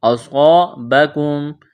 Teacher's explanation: صاد کو موٹا کرنا ہے، صاد میں سیٹی کی آواز پیدا کرنی ہے، الف مدہ ہے، میم ساکن کے بعد یا ہے، یہاں پر اظہار کریں گے، واو ساکن سے پہلے زبر ہے، واو لین ہے، اس کو کھینچنا نہیں ہے۔